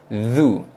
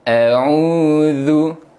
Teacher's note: Okey, jom kita semak sama-sama makhraj huruf zal yang mana keluarnya di bahagian hujung lidah. Kita keluarkan sikit hujung lidah kita, sentuh pada gigi gunting, hujung gigi gunting belah atas.